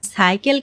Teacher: সাইকেল একটি বিদেশী শব্দ। তাই এখানে দন্তস এর উচ্চারণ অবিকৃত থাকছে।